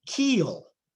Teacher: when it comes after a vowel there is a Velar articulation added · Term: dark L